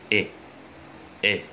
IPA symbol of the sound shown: ɪ